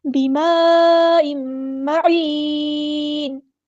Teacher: Connected مد، مد متصل. 4 یا 5 کاؤنٹ ہم نے اس کو لمبا کرنا ہے · 4 یا 5 کاؤنٹ ہم نے اس کو لمبا کرنا ہے. معین، اور تنوین کے بعد میم آیا تو ادغام مع الغنہ ہوگا. اور یہاں پر اگر ہم وقف کریں گے تو معین، نون کو ساکن کر دیں گے اور مد عارض بھی ہوگی، ٹھیک ہے.